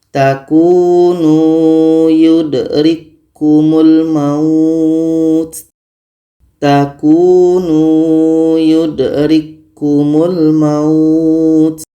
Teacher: Ka sudah sempurna masuk ke ka yang kedua. · ada k bertemu k oke bertemu dua huruf yang sama maka k ini sudah sempurna masuknya ke huruf k yang kedua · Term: idgham kamil